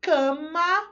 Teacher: na palavra cama, o A pegou um outro som, então, bonitinho, temos ali um som nasal.